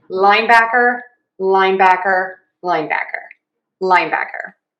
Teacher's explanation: We do have secondary stress on back.